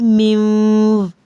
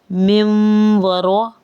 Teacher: میں نے میو نہیں پڑھا، نون کو بالکل ختم نہیں کیا، میں نے نون کی آواز کو 10% تک شامل کیا ہے واو کی آواز کے ساتھ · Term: ادغام